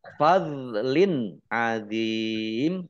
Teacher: dok sukun bukan kolkolah, jangan dipantulkan. Kasroh tanwin bertemu dengan huruf ain, izhar, dibaca jelas.